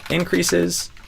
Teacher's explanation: Um so yeah the in and increases because there's a C the letter C here that's a K sound just happens to be written with the letter C but because the K is done with the back of the tongue it influences potentially this N and kind of has gravity and pulls the N further back to the mouth than it would normally be